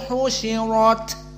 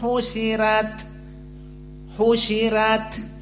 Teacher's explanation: jumhur ditafhimkan dan qiraah Wars di tarqik